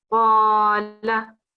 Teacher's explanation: We have 2 seconds on Qa and only 1 second on La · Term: vertical Fathah